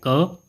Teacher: क जो वर्ण है वह अल्पप्राण अघोष है।